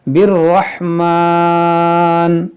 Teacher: अलिफ मद्दा के बाद यहाँ नून पर आरजी सुकून आ रहा है रुकने की वजह से, तो यहाँ पर मद्दे आरिज का कायदा लगेगा, यानी खींच कर रुकेंगे